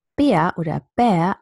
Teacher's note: when I say Bär oder Bär, I don't have a postvocalic R